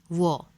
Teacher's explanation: जिह्वा का स्पर्श दंत और ओष्ठ से होता है।